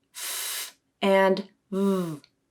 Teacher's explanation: English has 2 labiodental sounds, f and v. To make these sounds, you bring your lower lip up to your upper teeth. So labio to dental, labiodental.